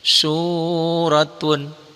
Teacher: Panjangnya satu alif atau dua harokat, dua ketukan. Suratun. Roknya dibaca tebel, tafkhim ya. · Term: mad tobi'i